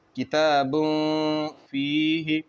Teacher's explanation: تو یہاں پر اخفا کا قاعدہ ہوگا، نون کی آواز کو ناک میں چھپا کر پڑھیں گے